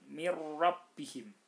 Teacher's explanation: Nun nya itu dihilangkan langsung masuk ke roknya di tasjid kan mirrobbihim nun sukun bertemu dengan rok maka ini hukumnya idgham bilagunnah · Nah, jadi mirrabbihim nun sukun bertemu dengan ra. Nah, nunnya itu dihilangkan langsung masuk ke ra, ra-nya ditasdidkan. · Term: izgham bila gunnah